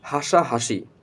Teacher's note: স্বাভাবিক অর্থাৎ যেখানে কোন বেশি বাতাস বের হয় না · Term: দন্তস তালব্যস মূর্ধন্যস